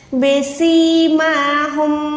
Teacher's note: سی کو لمبا کریں، میم کے اوپر کھڑی زبر ہے، اس کو بھی تھوڑا لمبا کر کے کھینچیں